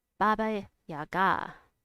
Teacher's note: Baba has stress on the first syllable. Yaga has an accent.